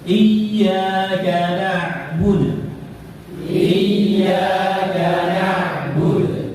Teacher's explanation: Harusnya ya sukun. Iyyaka bukan ya mad.